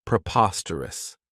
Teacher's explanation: This adjective has 4 syllables, and the stress is on that second syllable, preposterous. Remember that OS has that schwa, that sound.